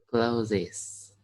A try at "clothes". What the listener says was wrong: clothes, not clothes. Okay, it's one syllable only. Clothes, clothes, clothes. Okay, not clothes.